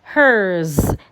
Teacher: So like in the word hers, the sound that we have before the S is a vowel sound. So it's automatically a voiced sound. Hers. So the S there will sound Z.